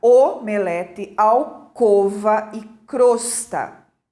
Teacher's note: veja lá o o é fechado né Tem um timbre fechado